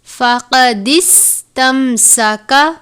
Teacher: موٹے والا قاف ہے حروف مستعلیہ میں سے